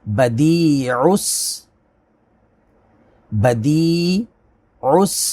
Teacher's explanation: یا ساکن سے پہلے زیر ہے، یا مدہ، اس کو کھینچیں گے، اور عین کا جو مخرج ہے وہ حلق کے درمیان سے، اور اس کی اچھے سے پریکٹس کرتے ہوئے عس عین اس کو اچھے سے ادا کریں۔